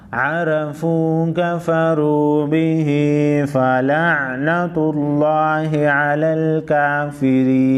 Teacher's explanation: وقف کی صورت میں نون ساکن پڑھا جائے گا